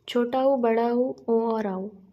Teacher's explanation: वे स्वर जिनके उच्चारण में होठ गोलाकार हो जाते हैं उन्हें वृत्तमुखी स्वर कहा जाता है